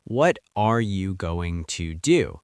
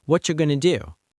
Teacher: The sounds connect. Going to becomes gonna. What are you becomes whatcha. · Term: connected speech